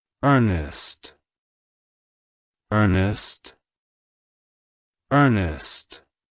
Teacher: to pronounce it correctly emphasize the first syllable